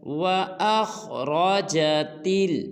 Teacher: خا کو اور را کو پر ادا کرنا ہے